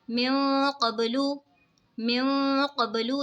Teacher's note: یہاں پہ دیکھیں نون ساکن ہے، نون ساکن کے بعد حروف اخفا کا قوف آ رہا ہے تو اخفا ہوگا یعنی غنہ کر کے پڑھیں گے. با میں قلقلہ ہوگا.